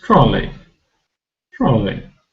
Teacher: we don't pronounce EY as a long vowel sound because it's not stressed. Rather, it's a short vowel sound, E, short E sound.